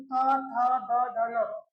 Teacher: अगर आप त थ द ध न बोलते हैं, आपका जो जीभ होगा दांत में स्पर्श करेगा आप चेक भी कर सकते हो।